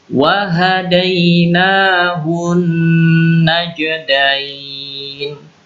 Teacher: Nun tasydid dan juga mim tasydid itu bacaan gunnah. Jadi gunnah itu berdengung dan 3 ketukan.